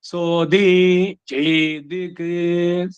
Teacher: ಅಂದ್ರೆ ಉದಾತದಿಂದ ಸಡನ್ ಅನುದಾತಕ್ಕೆ ಬರಬೇಕು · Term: ಸ್ವರಿತ